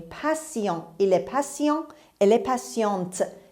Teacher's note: دقت کنید تی رو اینجا داریم سه میخونیم